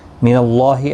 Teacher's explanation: اللہ کا لام زبر کی وجہ سے پر پڑھا جائے گا، اس کے اوپر کھڑی زبر بھی ہے، ایک الف کی مقدار کے برابر کھینچ کر بھی پڑھیں گے.